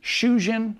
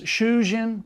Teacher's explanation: They differ only in the length of the first vowel.